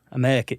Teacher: they drop the R or they don't do the Rs at the end of certain phrases